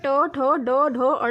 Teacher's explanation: ट, ठ, ड, ढ, अड़ा बोलने के लिए हमारे जीभ को फोल्ड करके हम अपने तालु से टच कराते हैं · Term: मूर्धन्य व्यंजन